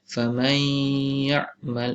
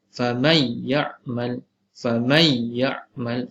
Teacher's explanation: famay masuk idgham tetapi tidak digunnahkan, tidak dibaca 2 harakat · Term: Idgham bila gunnah